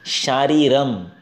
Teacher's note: शारीर में जो श है वो तालव्य है, इचु यशानाम तालु।